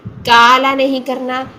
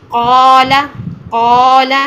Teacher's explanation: क्या होता है कि जब हम मद की हालत में इसको पढ़ते हैं, कॉफ को पढ़ते हैं, कॉफ तो मोटा कर रहे हैं लेकिन अलिफ उसका बारीक कर देते हैं, तो हमने एंड तक अलिफ भी मोटा ही रखना है, हमने इसको बारीक नहीं करना